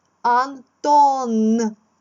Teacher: Закінчується ім'я на приголосний твердий Н.